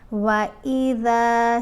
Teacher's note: ذال کو تھوڑا سا لمبا پڑا کیونکہ ذال کے اوپر زبر ہے، ساتھ الف ہے، تو یہ حرف مدہ ہے، ٹھیک ہے۔